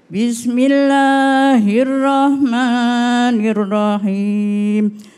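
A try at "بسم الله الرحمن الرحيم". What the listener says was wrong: Cuma tadi a'udzunya sama bismillahnya bisa diperbaiki lagi Bunda ya. Bismillahirrahmanirrahim. Pakai ha. Rahmanirrahim.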